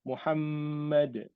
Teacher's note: dia dengung dekat mim tu kan syadda, wajibul gunnah, kemudian dal tu ada qalqalah kat situ